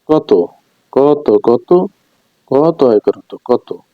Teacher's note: অন্ত বর্ণটি ওরূপে উচ্চারিত হয়েছে